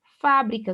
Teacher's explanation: Fá é a sílaba mais forte, uma proparoxítona